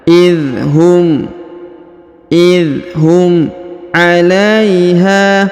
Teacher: Huruf la diayun sekali karena di depannya terdapat ya sukun.